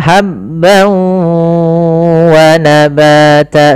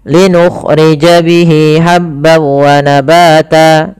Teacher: masukkan tanwinnya ke wau hilang suara nunnya menjadi suara wau kemudian ditahan gunanya maka habb wa nabata sepanjang dua harakat lebih sedikit kesalahan yang